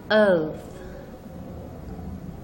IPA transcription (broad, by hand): ɔː